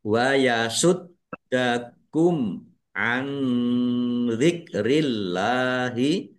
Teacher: Dalnya dibaca dobel ada tasdidnya ditekan dan ditahan biar tampak dobelnya